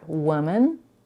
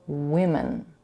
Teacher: The difference in pronunciation is only in the vowel in the first syllable of both words. In the singular form, woman, the first vowel is a laxed u, and the plural form is a laxed I.